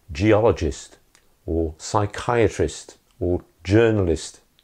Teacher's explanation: final IST as in geologist or psychiatrist or journalist always unstressed